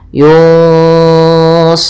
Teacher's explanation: Kemudian pada lafal run ada bacaan mat arid disukun, yaitu mat yang terjadi disebabkan karena sukun arid di akhir bacaan kita yang sebelumnya ada huruf mad